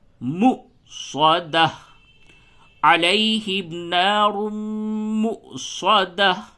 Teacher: اب یہاں پہ واو نہیں پڑھا جائے گا بلکہ حمزہ پڑھا جائے گا · واو یا الف پہ جب بھی حمزہ آوے اور اس کے اوپر جزم ہوئے تو کیا ہوگا؟ جھٹکا ہوگا.